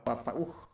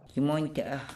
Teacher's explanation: Otra cosa que llama bastante la atención de los que conocen ya el dialecto lomeriano y escuchan por primera vez el dialecto migueleño es que muchas veces en el medio de las palabras aparece el llamado saltillo glotal, la oclusiva glotal, que ocurre en un gran número de palabras y afijos, pero no en sus equivalentes en el lomeriano.